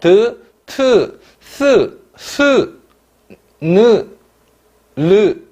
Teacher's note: 혀끝을 윗잇몸이 뭡니까, 여러분? 치조죠. 치조에 대거나 근접하여 나는 소리라고 했습니다. 그러니까 혀가 움직이면서 어디에 이쪽에 부딪히면서 나는 소리라는 거죠. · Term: 치조음